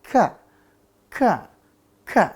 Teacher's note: k di sini dia makhrajnya itu pangkal lidah ya pangkal lidah bagian atas